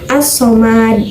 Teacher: Contoh, as-somad, dalam lafaznya ditulis al-somad, sedangkan karena ada tasdid, jadi lamnya itu tidak terdengar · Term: alif lam syamsiyah